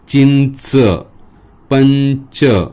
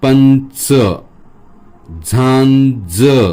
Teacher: पुढच्या अक्षरानुसार त्या अनुनासिकाचा आवाजात थोडासा बदल होतो पण जवळपास सारखे उच्चार आहेत